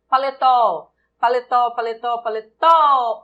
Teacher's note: O tó é a sílaba tônica, oxítona terminada em O.